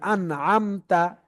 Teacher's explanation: এজহার করে পড়তে হবে গুন্না ছাড়া স্পষ্ট করে পড়তে হবে